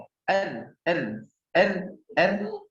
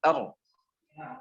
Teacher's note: ujung lidah yang digetarkan atau takrir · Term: huruf ro